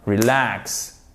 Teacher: accent tonique généralement sur la seconde syllabe